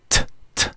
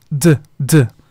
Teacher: Se pronuncia en el mismo lugar, T, D, pero en uno hago el sonido y el otro no hago el sonido.